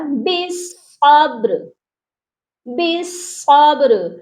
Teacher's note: اور با جو ہے حروف قلقلہ ہے، اس پر قلقلہ بھی لازمی ہوگا · لاسٹ والے دونوں لیٹرز جو ہیں وہ ساکن کیے جائیں گے وقف کی صورت میں، تو یہ پڑھا جائے گا بالصبر.